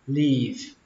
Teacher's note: Âm y ở đây phải là âm y dài, các bạn kéo nó ra